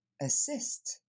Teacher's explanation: Le premier son, ça n'est pas un A, c'est le son E qu'on va entendre. Et ensuite, c'est le son E.